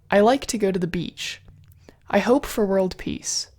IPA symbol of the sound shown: i